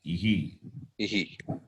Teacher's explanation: In the case of the vowel E, the Visarga takes the sound of the letter E, becomes ihi, not iha.